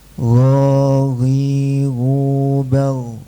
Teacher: murni suara gak boleh bercampur udara